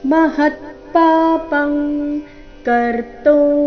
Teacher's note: ಅನುಸ್ವಾರದ ಉಚ್ಚಾರಣೆ ಕ ವರ್ಗದ ಅನುನಾಸಿಕದ ರೀತಿ